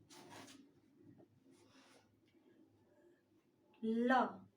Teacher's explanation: ल का उच्चारण करते समय जो हमारी हवा है वो बगल से निकल जाती है, इसलिए इसे पार्शियल वर्ग कहा गया है।